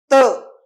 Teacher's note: जसे की आता प, ओठ एकमेकांना चिकटले, त जीभ दाताला जाऊन चिकटली